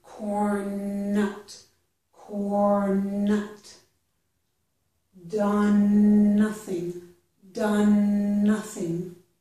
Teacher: But you can join them into one n sound.